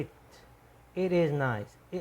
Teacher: تھوڑا سا ٹی ٹے اور تے جیسے ہماری اردو زبان میں ہے، اس کے درمیان کی آواز ہے